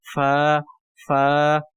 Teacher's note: فا کو ہم ثنایا علیہ کا سرا جو کنارے ہیں ثنایا علیہ کے ان کو نیچے والے ہونٹ کے اوپر لگانے سے فا ادا ہوتا ہے ، فا فا۔ اس کے بعد قوف ہے، دو نقطوں والی،